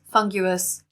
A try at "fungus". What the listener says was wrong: It's not funguous. There's no extra U. Fungus.